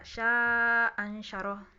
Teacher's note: membuang hamzah pertama ya dari dua hamzah yang berkumpul di dua kata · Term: hamzah pertama dibuang